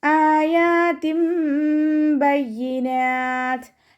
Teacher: ഹംസയുടെ കൂടെ അലിഫ് മദ് വന്നിട്ടുണ്ട്. 2 കൗണ്ട് വീതം നീട്ടിക്കൊടുക്കുക.